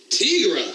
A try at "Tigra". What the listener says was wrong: Why are you pronouncing it Tigra? There's no two G's. You don't do a Tigger like that.